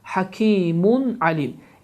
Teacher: Və tənvin dammadan sonra ay hərfi gərdiyi üçün həmin bu tənvin damma açıq-aşkar, yəni izharla oxunur